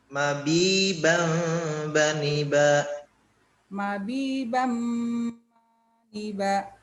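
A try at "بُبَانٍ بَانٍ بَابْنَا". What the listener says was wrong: Oke, nanti tadi ada sedikit kesalahan di sini. Ada kurang bu-nya kurang panjang sedikit, satu ayunan. Bu bang bani babna.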